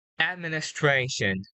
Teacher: Link the S to the T.